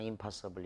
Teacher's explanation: 뒤에 P가 순음이야. 그러니까 역행동화. 뒤에서 영향을 줘가지고 순음의 영향을 받아서 똑같이 순음으로 바뀌어.